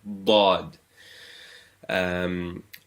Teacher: Just be careful you're not putting your tongue between your teeth. So it's not Dha. That is for Ta. This is Dad. Your tongue is behind the teeth. Dad. Whereas Za is like the letter Z.